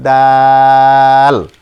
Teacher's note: জিহ্বার আগা সামনের উপরের দুই দাঁতের গোড়ার সাথে লাগিয়ে উচ্চারণ করতে হয়